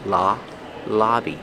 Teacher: use the short ah sound like hot and stop.